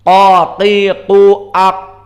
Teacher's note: Makna jahr adalah muni'a jarayan an-nafs. Maknanya jahr ini tidak boleh di saat qaf disukunkan keluar nafas.